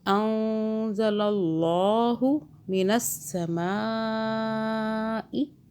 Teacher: اللہ موٹا پڑھیں گے، اللہ سے پہلے زبر آ رہا ہے